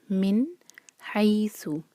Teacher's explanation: نون ساکن کے بعد حروف حلقی ح، تو ہم نون کو کلیئر پڑھیں گے، من حیث۔ حی جو ہے مدلین ہے۔ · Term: اظہار